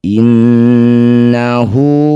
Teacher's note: Inna nun bertasydid disebut bacaan gunah musyaddadah. Dengungkan nun dua harakat. Innahu. Setiap ada hu atau hi yang dibaca panjang disebut bacaan marsilah qasirah.